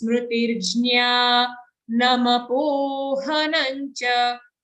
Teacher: Jnya, you can make it long. But the next letter, na, ma, both of these are short sounds and full sounds. Smrutirjnya namapohanancha. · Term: dirgha